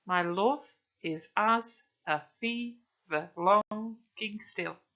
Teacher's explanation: It's also written in iambic pentameter, which means there are 5 stressed syllables per line. And remember, each line is 10 syllables long, so the second syllable in a pair are stressed.